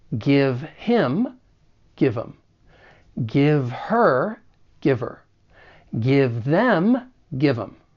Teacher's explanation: Now, if someone is him, her, or them, in that case, elision may occur, which is when certain sounds or syllables get removed. So if we remove that first consonant sound of each word, we can then link the phrases together